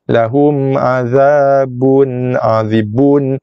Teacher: Lahum mim mati jumpa ain, izhar syafawi, so kita akan izharkan sebutan mim jelas